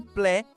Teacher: que soa como plé, com o E aberto e o T mudo